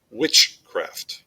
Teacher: with the word witchcraft, there's a stress on the first syllable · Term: trochaic